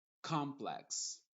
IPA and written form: ˈkɑmplɛks (Complex)